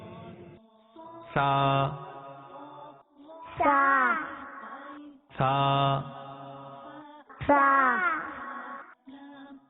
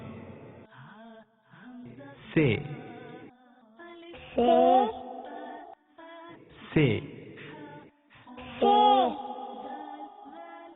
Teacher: عربی میں سا کی ادائیگی کا طریقہ یہ ہے کہ زبان کا سرا اور اوپر کے دانتوں کے اندرونی کنارے سے ادا ہوتا ہے